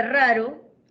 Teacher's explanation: En la segunda sílaba de raro, la sílaba ro, la vibrante es simple y por lo tanto no tiene ningún diacrítico encima. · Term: vibrante simple